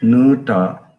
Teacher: in Muduga it has been retracted to U as a back vowel